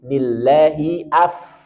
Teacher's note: Alirkan fa punya sifat hams. Dan rohowah ja menjadi dua harokat masuk dalam kategori mad tabi'i.